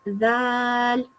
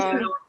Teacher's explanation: in a soft sound with your tongue at the top of your teeth.